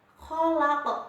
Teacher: Kholaq. Kholaq huruf qaf berharokat fathah di akhir ayat, bacanya juga dipantulkan.